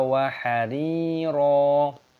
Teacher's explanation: Jannatau wa hari, ya sukun, roknya dibaca panjang, matobi'i, panjangkan 2 ketukan. Wa hariro, roknya dibaca panjang, mata iwad, jangan dibaca wa hariron.